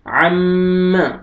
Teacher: دیکھیں میم مشدد ہے، میں نے آپ کو بتایا نون مشدد اور میم مشدد پہ غنہ کرتے ہیں تو یہاں پہ غنہ کریں گے